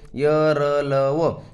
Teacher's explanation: जिभेचा उच्चारक अवयांशी पूर्ण स्पर्श होत नाही जिभेचा उच्चारक अवयांशी पूर्ण स्पर्श होत नाही ते काय झालं अंत्यस्थ व्यंजन झाले संख्या किती चार आहे वर्ण कोण कोणते दिले य र ल व हे काय दिल हे चार दिलेत.